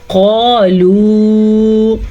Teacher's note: قالو، موٹی قاف واو مدہ کے ساتھ، بلکہ واو کے اوپر مد بھی ہے